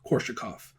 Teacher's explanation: And I've noticed the Swedish creeping in, because in Swedish you alter the S when it's preceded by an R. So you're going to hear a lot of Korsakov.